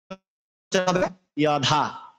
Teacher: অন্তস্থ জকে আমরা ইয় উচ্চারণ করব।